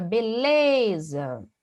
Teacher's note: É uma palavra com 3 sílabas, mas é o lê, né? A penúltima sílaba.